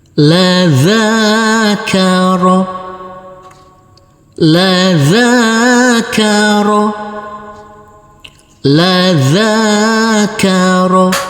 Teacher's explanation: huruf zal kita baca panjang dengan panjang 2 harokat, karena di atasnya ada huruf alif kecil yang berdiri tegak lurus.